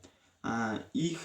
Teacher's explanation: bo'g'iz undoshi va h o'rtasida talaffuz qilinadi. Ikkovining o'rtasida.